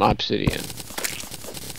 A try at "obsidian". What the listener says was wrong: It's obsidian, not ob. It's ub. Obsidian.